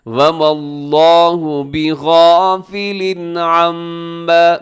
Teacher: اللہ موٹا پڑا جائے گا، لفظ اللہ سے پہلے میم کے اوپر زبر ہے ، وَمَا اللَّهُ بِغَافِلٍ عَمَّا، بِغَافِلٍ کے نیچے تنوین ہے اور